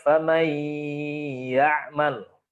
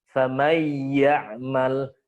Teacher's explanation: Famay ya'mal. Jadi tetap memposisikan makhrajiyah di punggung lidah, tidak mengeluarkan lewat khayshun. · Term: bila gunnah